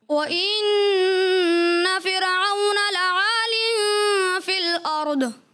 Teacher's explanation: اچھا پڑھا مگر آخر میں ضاد میں کلکلہ کیا. ضاد میں کلکلہ نہیں کرنا ہوتا.